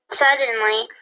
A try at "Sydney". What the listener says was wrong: Not suddenly. That Y is going to make an I sound. Sydney.